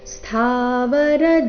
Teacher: ಸ್ಥಾನಲ್ಲಿ ಥಾ ಮಹಾಪ್ರಾಣ ದೀರ್ಘ